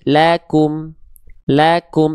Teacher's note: Tipiskan pelafalan huruf lamnya karena fathah dia vokalnya vokal A.